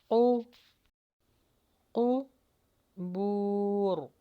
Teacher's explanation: رو کے مخرج کو آخر میں ہم نے ہیوی کر کے لگانا ہے · یہاں پر قاف کے مخرج کو ہیوی لگائیے